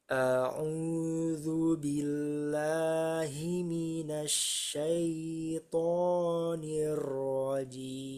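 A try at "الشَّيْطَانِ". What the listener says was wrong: Ya, sukunya jangan terlalu lama. Syaito, syaito, langsung. Syaito. A-nya, A-nya juga. A'u, langsung ke ain. A'u.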